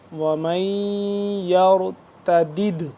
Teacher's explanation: یہاں پہ ہم کریں گے غنہ اور را کو پر کر کے پڑھیں گے